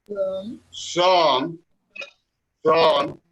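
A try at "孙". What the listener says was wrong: Es son. Son. Son. Si decimos son, es el tercero, pero el segundo es como más corto, es más cortico, es son.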